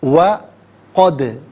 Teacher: دال ساکن ہے، لیکن دال حرف قلقلہ ہے۔ حرف قلقلہ اگر ساکن ہو تو آواز لوٹتی بھی محسوس ہونی چاہیے